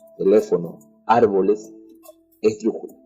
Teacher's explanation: Las palabras esdrújulas, también denominadas proparoxítonas, es aquella palabra en que la mayor fuerza de voz recae en la antepenúltima sílaba